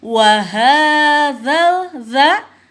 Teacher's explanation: cara pengucapannya yaitu za ujung lidah digigit sedikit ya